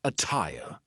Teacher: attire is an example of a double T that sounds like a true T. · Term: true T sound